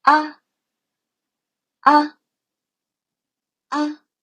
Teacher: fifth tone is a neutral tone. There's no tone mark above it. You can just read it shorter and lighter.